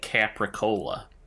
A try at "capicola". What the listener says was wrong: Capicola? The R is not pronounced, at least not in the Bostonian dialect of English.